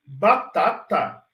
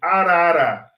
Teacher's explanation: se eu falar batata eu paro o fluxo de ar e explodo ou faça uma oclusão explodo faço mais conclusão explode então eu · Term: oclusivas